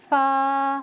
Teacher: सनाया उलिया की नोक नीचे के होठ के तरी वाले हिस्से से मिलकर अदा होता है। सामने के ऊपर के इन दो बड़े दांतों को सनाया उलिया कहा जाता है।